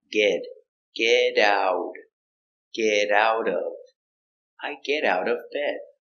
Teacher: The T's are pronounced with D sound.